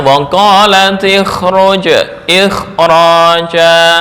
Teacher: Jika ra tafkhim maka huruf kha memiliki tingkatan tafkhim lebih kuat.